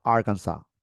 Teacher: no es como se lee ahí, es Arkansas, en un acento en la primera sílaba.